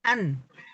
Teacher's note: nun itu ujung lidah ketemu langit lah.